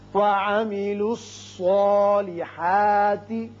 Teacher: یہ صاد حروف مستعلیہ میں سے ہے، پر پڑا جائے گا. اس کی وجہ سے جو کھڑا زبر ہے الف کا قائم مقام وہ بھی پر ہوگا.